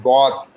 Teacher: জিহ্বার গোড়ার কিনারা উপরে মাড়ি দাঁতের গোড়ার সঙ্গে লাগাই, জিহ্বার গোড়াটা বাম পাশের মাড়ি দাঁতের গোড়ার সঙ্গে লাগাইবেন।